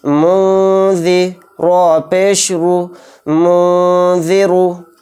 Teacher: حروف اخفا کے 15 حروف میں سے ایک حرف ذال بھی ہے، تو اس لیے اس میں اخفا کا قاعدہ ہوگا اور نون کی آواز کو ناک میں چھپا کر پڑھیں گے